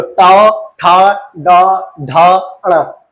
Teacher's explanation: अब टौ बोलो, टौ बोलते हुए जीभ मुड़ जाएगी।